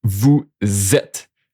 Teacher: So you see this is pronounced vu zet. The s become like a z sound. · one S in between two vowels. It's a Z sound.